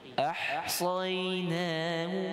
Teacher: Kalimah ahsayna dengan sikit tekan pada ha bagi bersih halqi tu. Ahsaynahu. Huruf sad bacaannya tebal, sayna.